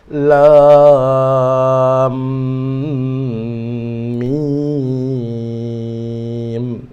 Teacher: Semasa kita masuk kepada mim, mim tu hendaklah didengungkan. Dengung kerana mim berjumpa mim.